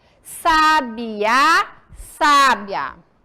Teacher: Aonde vem a sílaba tônica na palavra sábia? Na primeira sílaba. Onde vem a sílaba tônica na palavra sabiá? Na última.